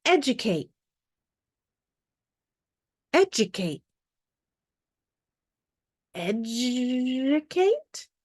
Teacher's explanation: is making that sound in this word is our letter d d is going to make a j sound when it is followed by a long u when it's unstressed